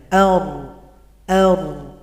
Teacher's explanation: kalau huruf ro itu dibelokkan dari depan ke arah belakang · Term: inhiraf